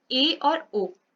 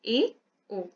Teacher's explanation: ए और ओ में हमारा मुख द्वार आधा बंद है, ए, ओ, कम हमारा मुख द्वार उसमें बंद है। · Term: अर्ध संवृत